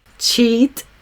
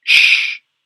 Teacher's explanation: I guess it's a little bit longer than the ch sound. Ch goes into it more quickly, and shh, you sort of can maybe stay with for a bit